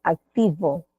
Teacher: y juntan el labio inferior con los dientes superiores no y no pronuncian como la B con los dos labios